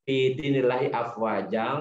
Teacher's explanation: Fa itu salah satu huruf ikhfa. Jadi domat fathatainnya jadi didengungkan karena di depannya ada huruf fa.